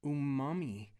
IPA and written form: uˈmɑːmi (Umami)